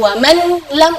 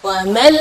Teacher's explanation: idgham Bil ghunah tidak ada dengung ya · jadi huruf nunnya tidak ada, atau kita dibilang idgham ke huruf berikutnya dan gunnahnya tidak ada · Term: idgham bila gunnah